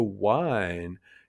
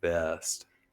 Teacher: Russian doesn't have the W sound. So, wine comes out as vine and west comes out as best. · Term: Russian accent